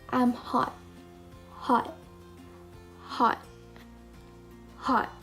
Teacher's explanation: we are not going to pronounce the T but instead we are going to stress the word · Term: unreleased T